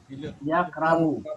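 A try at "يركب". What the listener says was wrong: ইয়ারকাবু, আগে র,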